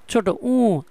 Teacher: উ ধ্বনি উচ্চারণে ঠোঁটের উন্মুক্তি কেমন? এটা সংবৃত্ত, একটু ছোট করে হয়